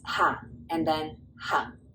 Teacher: So this is going to be shorter and it's hung. The good news is that all of these are low falling tones.